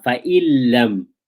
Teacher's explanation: You're going to do idgham. You will merge the noon into the lam.